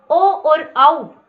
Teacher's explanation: इन दोनों वर्णों को बोलते समय कंठ के साथ होठों का स्पर्श होता है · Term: कंठोष्ठ